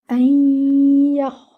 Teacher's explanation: You will merge the noon into the ya with the gunna. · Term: idgham